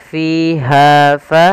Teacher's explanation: adanya kasrah bertemu dengan Ya kita panjangkan dua harakat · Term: Mad thi'i